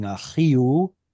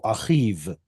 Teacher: instead of it being achio, like it is in Aramaic, and it simply becomes consonantal, achiv